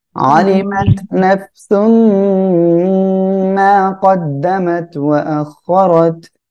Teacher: তারপরে ওয়া আখরাত র এর উপরে জবর মোটা করে পড়বেন